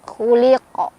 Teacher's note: Khuliqa ada qalqalah kubro karena ada huruf qalqalah yaitu qaf yang sukunnya bukan sukun asli melainkan sukunnya karena disukunkan karena berhenti. Cara bacanya dipantulkan dan pantulannya lebih besar